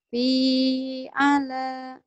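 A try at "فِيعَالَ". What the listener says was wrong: Bukan, panjang semua itu. Oke, panjang semua. Fi'ala.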